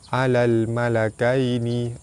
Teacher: alif lam bertemu dengan mim, alif lam qamariyah, lam dibaca jelas.